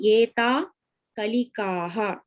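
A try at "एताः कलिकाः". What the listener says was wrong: Etaha Kalikaha. Don't miss the Visarga.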